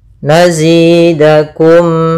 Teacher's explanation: ketemunya Alif atau ketemu Hamzah maka kita namakan dengan izhar syafawi tidak boleh ditahan suara mimnya tapi langsung